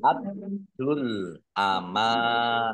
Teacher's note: Dalnya dibaca dobel, ada tasdidnya. Biar tampak dobel maka ditekan.